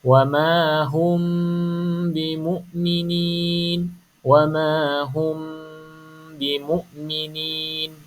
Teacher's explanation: Cuma cara baca dia, kita tutup mulut rapat, bibir atas, bibir bawah, touch. Maksudnya sentuh, tutup, tapi tak payah tekan, just tutup saja dan dengung 2 harakat. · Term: ikhfa syafawi